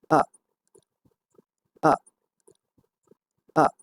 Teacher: the velum is raised blocking of the nasal cavity. আমাদের soft palate উপর দিকে থাকবে নাসিকারন্ধ্র বন্ধ করার জন্য যাতে বাতাস প্রবাহিত না হয় নাসিকারন্ধ্র দিয়ে। · এবং এই ধ্বনিটি হচ্ছে একটা বিশেষ নাম আছে, এটাকে বলা হয় শোয়া সাউন্ড। অর্থাৎ এই ধ্বনিটি ভাওয়াল সাউন্ডটি সবচেয়ে কম সময় নেয়, এর জন্য এই ধ্বনিটাকে শোয়া সাউন্ড বলে। তো এই ধ্বনিটি হবে এরকম, আ আ আ।